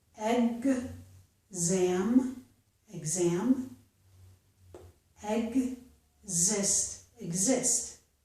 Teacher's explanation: In the two words exam and exist, we can hear the two sounds G and Z. Exam, exam, exist.